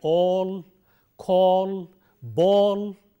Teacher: a rounded vowel which is long o as we have in a word like all call ball and